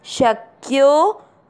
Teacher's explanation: आपको यो की मात्रा को लंबा खींचना है